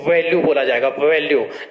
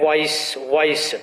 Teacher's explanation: जब अंग्रेजी का हम वॉइस बोल रहे होते हैं तो इस दौरान भी हमारे क्या होते हैं, दांत और ओष्ठ जो है आपस में स्पर्श करते हैं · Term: दंतोष्ठ